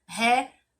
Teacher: Então, a sílaba tônica da palavra relógio é o ló. · Na terceira palavra, relógio, eu logo observo que a palavra está acentuada, que é o ló, e na pronúncia ela permanece sendo a mais forte